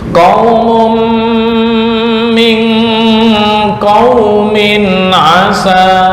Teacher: tanwin bertemu min, bacaan idgham di gunnah, ditahan ya, ditahan 2 sampai 3 ketukan